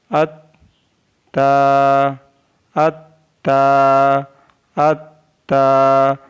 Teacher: ज़बान की नोक और ऊपर के दांतों की जड़ से ता अदा होता है · अलिफ ता ज़बर अत ता, ता is pronounced from the tip of the tongue and the roots of the upper front teeth